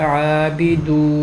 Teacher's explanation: واو مدہ کے بعد نون پہ وقف کرنا چاہ رہے ہیں تو بن جائے گا عابدون، مد کر کے وقف کریں گے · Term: مد عارض وقفی